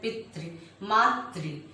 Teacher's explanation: री की मात्रा का उच्चारण भी र की तरह होता है। जैसे हम बोलते हैं पितृ मातृ, तो बोलते हैं तो लगता है र बोल रहे हैं, लेकिन वह री की मात्रा होती है।